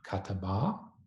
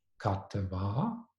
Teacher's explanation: together, they would have been “kataba.” Over the course of time, the middle a-vowel would have reduced to schwa